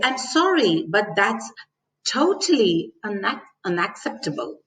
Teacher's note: totally is the word stressed here so when i say totally i rise my voice at the · when i say totally i rise my voice at the end of the word totally